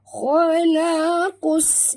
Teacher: Khalaqus, kha tebal, jangan baca kha, baca kha. Khalaqus, masukkan bunyi qaf terus ke dalam sin tanpa membunyikan alif lam. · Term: idgham syamsi